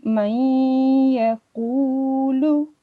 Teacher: If ya, noon, vav, and mim appears after noon sakin or tanween, so assimilation will take place with 2 seconds of ghunna · we have to do 2 seconds ghunna when it is noon sakin and joining with the next one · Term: partial assimilation